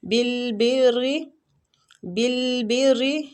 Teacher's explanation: با کو را کے ساتھ ملائیں گے اور را کو باریک پڑھیں گے زیر کی وجہ سے